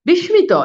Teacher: বিস্মিত, এই যে দেখেন এটা হবে কি অ্যাকচুয়ালি উচ্চারণটা হবে বিস্মিত, এই যে দেখেন মফালা মাঝখানে আছে এই জন্য দেখেন শয়ের উচ্চারণ দ্বিত্ব হচ্ছে